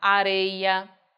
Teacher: Areia, também não vou acentuar porque o ditongo aí não é aberto. O ditongo aí é fechado, por isso não acentuo.